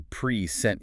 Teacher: The stress jumps to the second syllable, and now it's a verb.